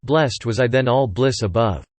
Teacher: The plosive alliteration of blessed and bliss links the two words